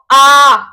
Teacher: पूरा मुंह खुलना। तो आ क्या है? विवृत स्वर है।